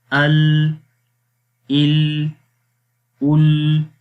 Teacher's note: لام کے اندر زبان کی سائڈ سے جو ہے وہ آواز باہر نکل جاتی ہے